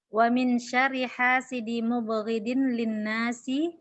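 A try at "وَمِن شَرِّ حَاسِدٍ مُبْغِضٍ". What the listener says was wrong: Wa min syarri hasidin mubghidin. Itu jadi ditanwin hasidin mubghidin.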